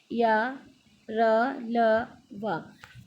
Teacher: इन व्यंजनों के उच्चारण के समय जिह्वा यानी जीभ मुंह के किसी भी भाग को पूर्णतः नहीं छूती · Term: अंतस्थ व्यंजन